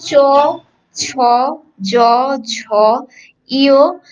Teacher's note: চ, ছ, জ, ঝ, ইয় এই সবগুলো কিন্তু তোমার তালুকে স্পর্শ করে